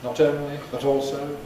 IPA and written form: ˈnɒt ˈəʊnli bət ˈɔːlsəʊ (not only but also)